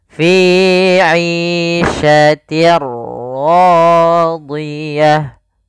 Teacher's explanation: Apa yang dimasukkan adalah suara tanwin. Awalnya fi 'ishatin ketemu ra, maka langsung masuk di ra-nya, bunyinya langsung ke huruf ra. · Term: idgham bila gunnah